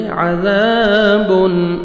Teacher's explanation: अलिफ मद्दा 1 सेकंड ज़ाल को खींचना है और ज़ाल को नरमी से अदा करना है। तनवीन के बाद हमज़ा आ रहा है, हुरूफ़ हल्क़े में से इज़हार करेंगे, जल्दी पढ़ेंगे।